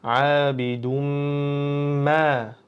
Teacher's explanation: Bu yerda daldan mimga birdaniga o'tib ketamiz, chunki mim harfimizning ustida tashdidimiz bor va g'unna qilib turamiz. Ikki harakat miqdorida.